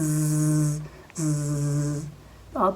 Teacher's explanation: इसके अंदर एक सिफत पाई जाती है जिसको बोलते हैं मजहूर। जब जा की आवाज हम निकालते हैं ज तो आप अपने गले के साथ हाथ लगाएंगे तो गले में वाइब्रेशन सी होती है।